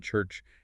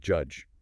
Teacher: And finally, there are africates which are like a combination of a stop and a fricative. They start with complete closure and then release into a fricative like for chi in church and j in judge.